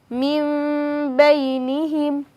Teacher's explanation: নুন সাকিন বা তানভীনের বামে ইকলাব থাকলে অর্থাৎ ইকলাবের বা থাকলে মিম দ্বারা পরিবর্তন করে পড়তে হয়